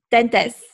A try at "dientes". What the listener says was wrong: Dientes. Dientes with the I.